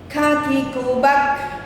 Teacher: Kaf tidak boleh memantul. Tidak boleh tawallud, ditahan dan bacaan ikhfa.